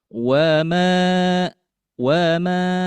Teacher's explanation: Hanya panjangnya cukup dibaca dua harakat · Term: mad thobi'i